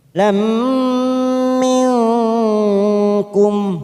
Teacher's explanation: fathah tanwin bertemu dengan huruf mim yang bertasdid warna merah, namanya bacaan idgham bi gunnah. Kita tekan selama 3 ketuk.